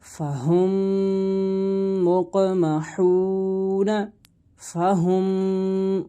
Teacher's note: میم ساکن کے بعد دوسری میم آ جائے تو میم ساکن میں ادغام شفوی ہوگا، یعنی غنہ کر کے پڑھیں گے